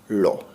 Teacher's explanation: এই বর্ণটির উচ্চারণে জিহ্বার অগ্রভাগ দন্তমূলকে স্পর্শ করে এবং জিহ্বার দুপাশ দিয়ে বাষ্প নির্গত হয়, ল। এজন্য বর্ণটিকে পার্শ্বিক বর্ণ বা পার্শ্বিক ধ্বনি বলে।